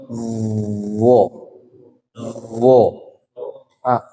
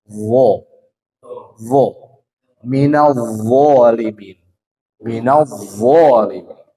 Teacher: Ujung lidah menempel ke ujung gigi. Nih. Gini, Pak. Wo. Jangan bo, jangan ditekan. Lidahnya jangan ditekan, tapi digetarkan. Wo, wo, minal zalimin, minal zalimin.